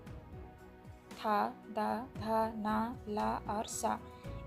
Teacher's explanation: दांतों से निकलने वाले आपके उच्चारण है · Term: दंत वर्ड